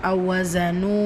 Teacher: வாவ் மத்தா இரண்டு ஹரக்கத் அளவு நீட்டம் கொடுங்க